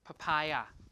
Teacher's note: The second P is aspirated. The first one is unaspirated.